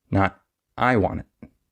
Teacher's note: So instead of stressing the I, we would stress the want.